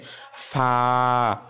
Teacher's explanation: উপরের যে দুইটা দাঁত আছে সামনের, সেই দুইটা দাঁত এবং নিচের ঠোঁটের ভেজা অংশকে লাগিয়ে আলতো করে উচ্চারণ হবে ফা। এটি টেনে উচ্চারণ করতে হবে। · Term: ফায়ের উচ্চারণ